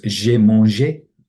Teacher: the E of je is dropped before the vowel